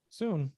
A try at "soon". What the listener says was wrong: It sounded like your lips came together a little bit with soon.